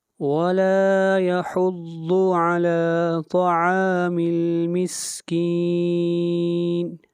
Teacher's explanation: مسکین کے اوپر مد عارض ہے، اس کو 3 الف کے برابر کھینچ کر پڑھیں گے